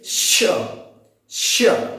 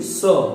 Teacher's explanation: जब कभी भी श का उच्चारण किया जाएगा तो जीभ जो रहती है हल्का नीचे होती है, और जो वायु होती है बहुत तीव्र गति से बाहर आती है। जैसे देखिए श, श, और ये जो रहती है जीभ बिल्कुल सीधी होगी स, और इसमें जो जीभ होती है हल्का ऊपर होती है, वायु ऊपरी दांत के पास से होकर निकलती है स, ये ऐसे करके जाती है।